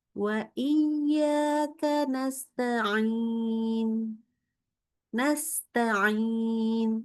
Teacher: Membaca huruf ain, suaranya sengau. Kenapa? Karena keluar dari hidung.